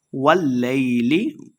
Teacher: واللیل لام مشدد ہے، واو کو لام کے ساتھ ملائیں گے